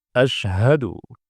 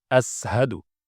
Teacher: Bacaan salah. Yang benar shin, tafashi, tengah lidah dengan langit-langit. Sementara sin, kalau sin itu ujung lidah dengan gigi seri bawah.